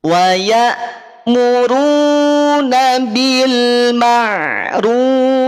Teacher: Ru-nya monyong, tapi pada huruf fa dia tipis.